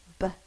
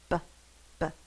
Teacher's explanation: My lips are closed. B, b. And then the bubble is popped.